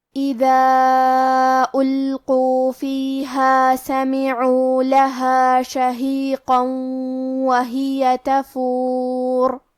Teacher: کلمت تفور میں یہاں حرف الرا کا حکم ہے تفخیم، لہذا ہمیں را کو موٹی آواز میں پڑھنا ہے